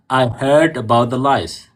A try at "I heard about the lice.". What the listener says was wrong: Very nice.